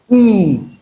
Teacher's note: When you say e, your lips are straight. So you can describe that sound as straight vowel sound.